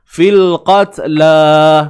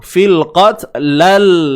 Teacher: Bila berhenti, la automatik jadi 2 harakat. Sebab dia memang bacaan mat. Tapi bila sambung, bila wasal, digugurkan bunyi mat tu.